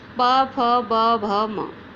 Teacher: जो वायु है वो ओष्ठ के द्वारा निकलती है, ओष्ठ के स्पर्श करके निकलती है, इसलिए इन्हें ओष्ठ का स्थान मिला है।